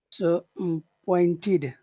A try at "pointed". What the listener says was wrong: Point, not pointed, pointed, pointed. No, it doesn't go up; it goes down. Pointed.